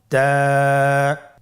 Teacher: জিহ্বার আগা সামনের উপরের 2 দাঁতের গোড়ার সঙ্গে লাগিয়ে উচ্চারিত হয়।